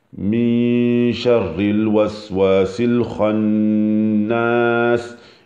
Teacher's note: il faut qu'il y ait un tout petit roulement qui ne soit pas trop prononcé